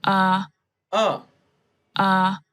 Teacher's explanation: Your tongue is relaxed. It's just in the central part of your mouth. It doesn't move up. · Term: schwa sound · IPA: /ə/